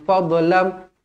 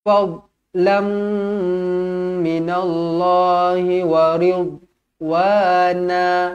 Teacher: Yang ini bukan qalqalah. Huruf dot bukan qalqalah. Jadi yang mana bukan qalqalah jangan lantunkan dia.